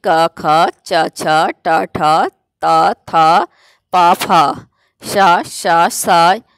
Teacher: उच्चारण में प्राणवायु में प्रकंपन नहीं होता है। घोष में तो प्रकंपन होता है, ध्वनि निकलती, परंतु इसमें नहीं होती है, इसलिए इन्हें अघोष वर्ण कहते हैं या अघोष कहते हैं।